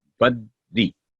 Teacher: کسرہ کو آواز لمبی نہیں کرنی، صرف 1 سیکنڈ ہی اس کا رول ہوگا، 1 سیکنڈ ہی لمبائی ہوگی.